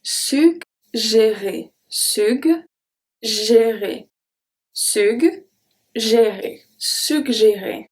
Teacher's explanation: it's going to make a G sound, the hard sound, and then the soft G